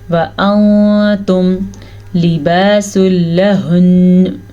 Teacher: ठीक है, व अंतुम लिबासुल लहुन, व अंतुम, नून साकिन के बाद ता हरूफ इख्फा में से है, तो हम नून साकिन को छुपा के पढ़ेंगे, छुपे हुए गुन्ने के साथ पढ़ेंगे